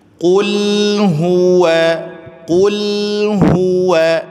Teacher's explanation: hu-nya monyong, waw-nya kemudian ditipiskan.